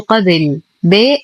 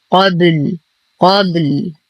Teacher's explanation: أما وصلا فاللام مضمومة من قبل. وانتبه كثيرا عند الوقف بإسكان الباء ثم اللام مع قلقلة الباء وعدم كسرها، فلا أقول قبل ب، لا، قبل قبل مع قلقلة الباء قلقلة صغرى.